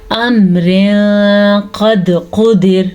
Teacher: امر قد قدر، یہاں پہ بھی اخفا کا قاعدہ ہو رہا ہے. ہم نے آپ کے سامنے تنوین کی آواز کو چھپا کے پڑھا ہے کیونکہ آگے قاف حروف اخفا میں سے آیا ہوا ہے.